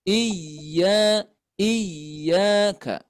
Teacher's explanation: pada Iya bertasdid suaranya dinaikkan